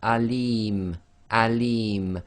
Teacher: the li, which is the long vowel kasra ya, again the meme is being read as sakin